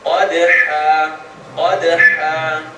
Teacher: Qaf is heavy, dal is light. Qad is going to bounce.